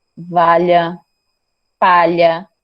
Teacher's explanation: Você sente um leve sopro pelas laterais da sua boca. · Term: lateral